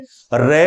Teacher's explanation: र में जीभ का स्पर्श थोड़ा सा होता है फिर कंपन होता हुआ नीचे कंपन होते हुए जीभ नीचे आ जाती है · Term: र का उच्चारण